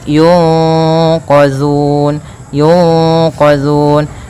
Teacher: Nah, di sini ada nun mati bertemu dengan huruf qaf, yang mana qaf termasuk daripada bacaan ikhfa. Cara membacanya yaitu suara nunnya disamarkan kepada huruf qaf. Yunqa ditahan, kemudian langkah selanjutnya ditahan gunnahnya.